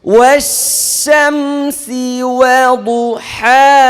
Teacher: শিন বলার সময় শো শো শব্দ মুখে ছড়াই যেতে হবে